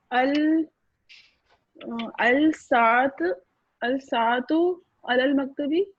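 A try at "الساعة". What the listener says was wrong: बिल्कुल सही है, लेकिन आप अल सा क्यों कह रही हैं? सीन ये शमसिया है।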